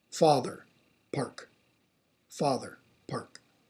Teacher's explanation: The aw in father is lengthwise longer.